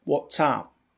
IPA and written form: ˈwɒtsæp (WhatsApp)